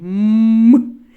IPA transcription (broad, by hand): М